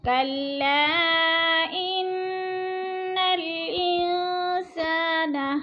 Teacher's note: ان کی نون مشدد ہے، سختی سے ذرا جما کے پڑھیں گے، اور ان پہ غنہ ہو رہا ہے